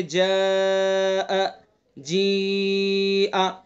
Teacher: جاء حرف مد ہے اس میں اور اس کے بعد حمزہ ہے، تو حرف مد میں آواز کھینچ رہی ہے